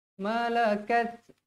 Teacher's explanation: Kat huruf ta. Huruf ta mestilah dibaca dengan keadaan hamas, berangin.